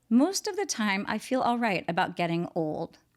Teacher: we have most at the beginning and old at the end so we have that long o sound which is a very plaintive kind of sound